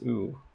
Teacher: it's a high back rounded vowel